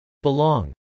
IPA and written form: bɪlˈɔːŋ (belong)